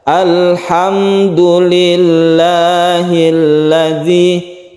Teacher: kita tidak memanjangkan huruf mim ini jadi langsung kedal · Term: izhar syafawi